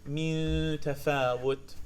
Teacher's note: The noon itself, the lingual part, not really there, but the nasal part is very present. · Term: al-ikhfa